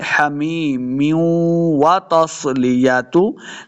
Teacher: मीम के नीचे जो दो ज़ेर की तनवीन है उसको आगे वाव के साथ मिलाते, गुन्ना भी करते क्योंकि वाव हुरूफ़े यरमलून से है, तो मिला के पढ़ते हमीम्यू व तस्लियतु।